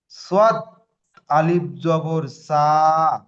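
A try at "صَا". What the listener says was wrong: সদে টান আসলো না। সদ, আলিফ, সা হবে না। শোনেন, সদ, আলিফ জাবার স।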